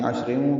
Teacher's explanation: اور ملانے کی صورت میں را کے نیچے دو زیریں ہیں، تنوین کے بعد واو آنے کی وجہ سے ادغام کرنا ہوگا، یعنی عشریں پڑھنا ہوگا اور را باریک پڑھیں گے۔